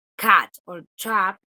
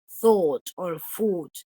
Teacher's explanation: your lips are more more spread than for the more rounded vowels like thought or food where your your lips are basically like a circle